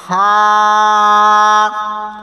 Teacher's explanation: সা বলার সময় জিহ্বার আগা সামনের উপরে দাঁতের আগার সঙ্গে লাগাতে হবে। সা।